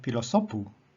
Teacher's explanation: three back can only ever be oxus here we have pilosopu here the accent is upon the second last syllable and it is oxus